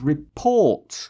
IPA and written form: rɪ'pɔːt (report)